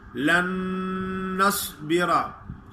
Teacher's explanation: पहला नून साकिन और दूसरा मुशद्दद है, तो दोनों को एक ही मुशद्दद नून अदा करेंगे। या मूसा लन नस्बिरा, लन नस्बिरा दो नून नहीं पढ़ने।